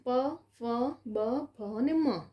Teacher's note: એનું ઉચ્ચારસ્થાન હોઠ એકબીજાને સ્પર્શે છે એટલા માટે એ ઓષ્ટીય પ્રકાર છે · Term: ઓષ્ઠ્ય